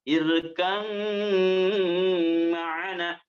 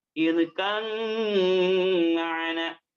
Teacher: Maka dibacanya diidghamkan, idghamnya idgham mutajannisen sejenis irkam ma'ana, dimasukkan kepada huruf mim, diidghamkan secara kamil, secara sempurna, maka dimasukkan juga dengan rongga hidungnya. Irkam ma'ana, panjangkan 2 harakat.